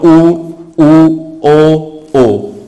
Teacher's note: तो आपके जो होठ होंगे वो किस शेप में बन जाएंगे? गोल, यानी कि वृत्त के समान बन जाएंगे। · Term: वृत्ताकार स्वर